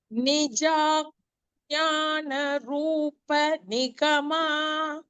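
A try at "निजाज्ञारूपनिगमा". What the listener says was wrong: so it is not ಜ್ಞಾನ it is just ನಿಜಾಜ್ಞ ಆಜ್ಞಾ so it is ನಿಜಾಜ್ಞ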